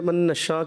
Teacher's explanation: حرف مدہ کے بعد مد متصل ہے, اس کی مقدار آپ 2 سے 2.5 الف کوشش کریں, اچھے انداز سے پوری مقدار پڑھیں.